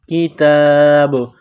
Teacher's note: کتاب، جب وقف کریں گے تو با کو سائلنٹ کریں گے۔ با کے اوپر جب سکون آئے گا تو یہاں پر قلقلہ کریں گے